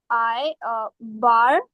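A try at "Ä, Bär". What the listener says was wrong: Not I. It's English wala A. So English A, bear.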